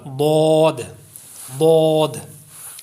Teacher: यह जुबान की करवट और ऊपर की दाड़ो की जड़ से अदा होता है जुबान की करवट और ऊपर की दाड़ो की जड़ से जो